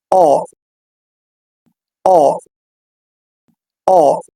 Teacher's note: The vocal folds separate and vibrate, আমাদের vocal fold separate অবস্থায় থাকবে এবং কম্পিত হবে · the tongue is set at a low back position in the mouth, জিহ্বার পিছন থেকে উচ্চারিত হবে।